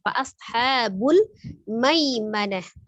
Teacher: ada huruf shadnya sifatnya sapir dan dia termasuk huruf yang tebal ya. Angkat pangkal lidahnya.